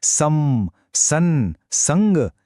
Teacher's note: चिन्ह एकच आहे तोच छोटासा टिंब पण तो किती वेगवेगळे नाकातून येणारे आवाज दाखवतोय